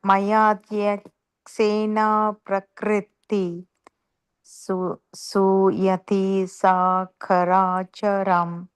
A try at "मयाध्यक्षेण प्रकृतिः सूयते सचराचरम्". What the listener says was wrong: Not ka, Mataji. CA means cha.